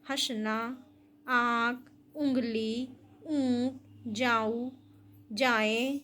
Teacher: यह स्वरों का ध्वनि गुण है। इसमें स्वर के उच्चारण में मुख के साथ-साथ नाक में भी श्वास निकलती है। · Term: अनुनासिक